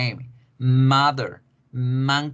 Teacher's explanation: se produce en la nariz por eso se llama sonido nasal